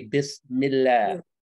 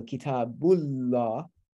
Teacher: the L sound becomes velarized to an ah sound. But not when it's preceded by an E.